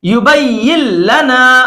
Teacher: نون ساکن کے بعد اگر لام آ جائے تو ایسی صورت میں نون ساکن کے نون کو نہیں پڑھتے ہیں، फिर क्या करते हैं, लाम को तशदीद के साथ बगैर गुन्ना के पढ़ेंगे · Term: इदगाम बिला गुन्ना